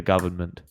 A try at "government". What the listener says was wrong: You keep pronouncing the N in the government.